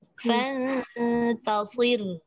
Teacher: Fanta nipis, sod dari bawah tebal, roh nipis balik.